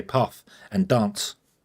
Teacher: I pronounce path with a R in it. And there isn't an R in the word path. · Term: regional dialect